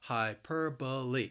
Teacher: the word has four syllables and the stress is on that second syllable